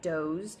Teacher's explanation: the th sounds the that are common in most and other dialects of English are replaced with D or V depending on where the th occurs